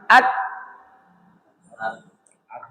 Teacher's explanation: Karena tertutup rongga untuk keluarnya suara. Saat ujung lidah ditempelkan dengan pangkal gigi seri atas, suaranya hilang. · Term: syiddah